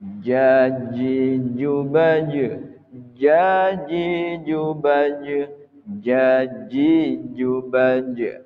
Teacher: Nah, jim ini jahar, tidak memiliki sifat hamas.